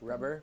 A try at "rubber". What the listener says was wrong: I think all of us did that. We rolled the tongue.